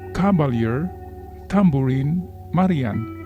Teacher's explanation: Anapistic foot consists of 2 unaccented syllables followed by an accented syllable